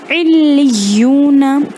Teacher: علیونا میں لام اور یا دونوں پر بھی شدہ ہے، تو عین پہلے لام سے مل جائے گا ایک دفعہ، لام پر شدہ ہے مطلب ایک بار اس کو ساکن کر دیں گے عل، پھر اس کو اسی کی علامت سائن کے ساتھ پڑھیں گے لی، لیکن کیونکہ آگے واپس شدہ ہے اس لیے وہ یا میں مل جائے گا علیو۔ · خیال رہے یہاں پر علیونا نہ پڑھیں بلکہ لام کو بھی 2 بار پڑھیں اور یا کو بھی 2 بار پڑھیں